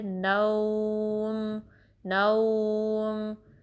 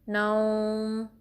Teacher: دھیان رکھنا کہ واو مدہ کی ساؤنڈ ناک میں نہ جائے